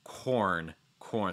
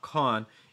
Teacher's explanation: make sure that that r before the n is strong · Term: r sound